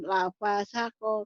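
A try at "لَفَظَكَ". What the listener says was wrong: Lafazaka. Nggak ada yang panjang.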